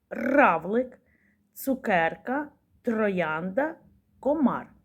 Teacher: звук р це твердий приголосний у звуковій схемі позначаємо однією рисчкою А який звук повторюються у